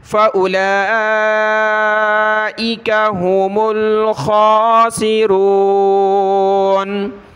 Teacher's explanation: لام کے اوپر کھڑا زبر اور مد ہے تو اس کو ہم نے زیادہ کھینچنا ہے